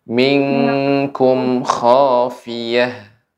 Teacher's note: untuk minkum ini ikhfa pada kaf sehingga bacanya eng